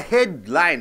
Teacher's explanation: So head should be stressed